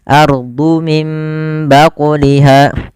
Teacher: Cara membacanya mengganti suara nunnya menjadi suara mim dan ditahan. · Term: iqlab